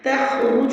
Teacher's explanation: تخرج میں خو کا مخرج الگ سے ادا کرتے ہوئے رو کو تفخیم کے ساتھ پڑھنا ہے اور جو کی آواز کو آپ نے لمبا نہیں کرنا۔